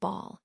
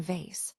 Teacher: A helpful way to distinguish them is to notice where the airflow is coming from. For B, the airflow is blocked completely by the lips before it's released, while for V, the airflow is continuous through the small gap between the teeth and lip, producing that buzzing quality.